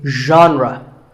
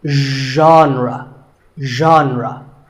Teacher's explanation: Pay attention to the first sound. It's like sh, but you have to put your voice into it. Genre, genre.